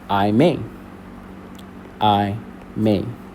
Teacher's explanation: May is a little bit more drawn out. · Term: stressed syllable